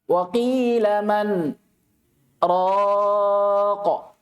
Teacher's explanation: Tapi tidak boleh ambil nafas di situ. Ya, diputus sama dengan waqaf sekitar 2 harokat. Tapi bedanya kalau sakta tidak boleh ambil nafas. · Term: saktah